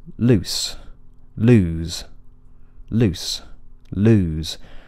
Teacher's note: the s or the Zed don't sound different enough when they're at the end of a word